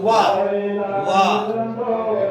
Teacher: जब हम व वर्ण का उच्चारण करेंगे तो हमारी जीवा दांत की ओर भी स्पर्श करने के लिए प्रयास करती है, और ओष्ठ भी हमारे बढ़ते हैं, ठीक है। तो वाह वाह, वाह के लिए दंतोष्ठ है।